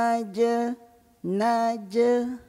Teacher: Jim tu huruf Qalqalah yang nipis je qalqalahnya